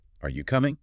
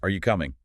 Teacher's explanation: Rule one, rising tone for questions expecting a yes or no. If your voice doesn't go up at the end, it doesn't clearly sound like a question.